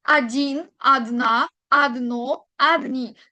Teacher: Recuerden que la pronunciación en el idioma ruso no es la misma como vamos a escribir, eh, sobre todo la o. Como no recae la tilde imaginaria en la o significa que la leo como una a.